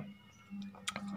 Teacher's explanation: जैसे कि च, च बोलते हैं तो च बोलने में च जीभ का जो एंगल है वो बदलते रहता है ना, और अधिक समय लगता है। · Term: स्पर्श संघर्षी